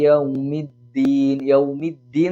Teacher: ദാൽ എന്ന് ഉച്ചരിക്കുമ്പോൾ നാവിന്റെ തല മേലെ മുൻപല്ലിന്റെ മുരട്ടിൽ തന്നെയാണ് തട്ടേണ്ടത് അതായത് ത എന്നുള്ള ആ ഭാഗത്ത് തന്നെയാണ് തട്ടുന്നത് പക്ഷേ അവിടെ കട്ടി കുറച്ചു